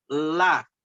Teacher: Jadi posisinya itu ujung lidah menyentuh langit-langit, bukan menyentuh gigi. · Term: huruf lidah